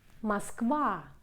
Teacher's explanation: O is unstressed position, becomes A.